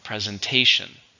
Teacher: with a stress in the third syllable